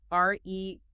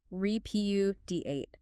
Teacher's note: 4 syllables, stress on the second.